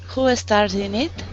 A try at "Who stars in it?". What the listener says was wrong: Wait, that's a falling question. Falling. Who stars in it?